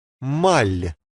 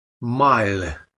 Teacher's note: as you pronounce that L the middle of your tongue comes up to the roof of your mouth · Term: soft sign